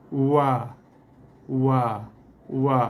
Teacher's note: Okey, bibir atas, bibir bawah, keluarnya huruf wa daripada dua bibir tanpa ada sentuhan di antara dua bibir. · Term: dua bibir tanpa bersentuhan